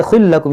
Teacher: یہ تنوین کے بعد لام ہے, ادغام کریں گے